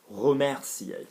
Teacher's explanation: Look at it, there's no acute accent on it, so it's remercier. Remer, you're going down then up